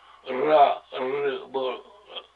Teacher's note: 리을 소리가 혀 떨림 소리로 나는 거